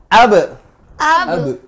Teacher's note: Huruf ba. Huruf ba bisa mantul apabila disukunkan atau dimatikan. Ab semuanya bunyi ab. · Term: qolqalah